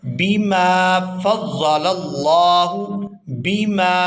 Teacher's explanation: اس کے بعد ہم لفظ دیکھ رہے ہیں بیما بیما، یہاں بھی الف خالی ہے اور اس سے پہلے میم پر زبر ہے تو یہ الف مدہ ہے۔ الف مدہ کی وجہ سے میم کو 1 الف یعنی 1 سیکنڈ کھینچ کر ادا کریں گے، بیما فضل اللہ بیما۔